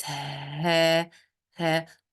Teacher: when we pronounce ها, the vocal cords are opened. It's ها, ها.